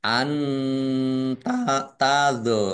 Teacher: Nun sukun bertemu dengan huruf ta, bacaan ikhfa, dibaca samar-samar.